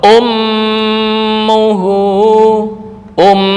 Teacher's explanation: um langsung masuk ke hidung khaisyum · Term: gunah